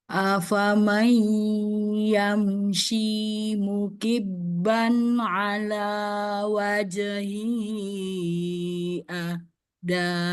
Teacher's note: Untuk mukibban kurang syiddah huruf ba-nya. Masih tawasud itu mukibban nempel di bibir ya suaranya.